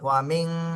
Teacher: ওয়াও জবর ওয়া, মিম নুন জের মিং। ওয়ামিং, নুন সাকিনের পরে ইকফার হরফ শিন এসেছে, এই জন্য এখানে ইকফা গুণা করতে হবে।